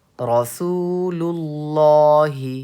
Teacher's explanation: یہاں پہ لام کو ہم پر کر کے پڑھیں گے کیونکہ تختی نمبر 16 میں لفظ اللہ کے لام سے پہلے زبر یا پیش ہو تو لفظ اللہ کے لام کو پر پڑھیں گے. یہاں پہ دیکھیے لفظ اللہ کے لام سے پہلے لام پہ پیش ہے, زبر یا پیش ہو تو لفظ اللہ کے لام کو پر پڑھیں گے.